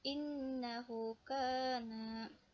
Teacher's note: huruf nun dan juga mim yang cara membacanya ditahan 2 ketukan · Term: gunah